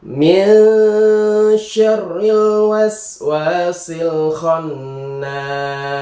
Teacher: Minyarril waswasil khannas. ini adalah nun sukun bertemu syin dibacanya samar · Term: ikhfa